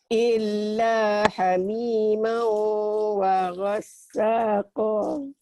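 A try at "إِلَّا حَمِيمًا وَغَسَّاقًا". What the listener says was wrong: Illa hamimau wa ghassaqa. Itu dua patah dibaca satu jika dihentikan. Qa jadi panjang, mad iwad namanya ya Pak Haji.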